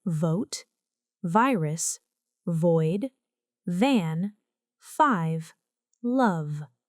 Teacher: This is a voiced sound. The upper teeth touch the lower lip, with vibration. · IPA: /v/